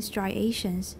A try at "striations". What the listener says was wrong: 没有S.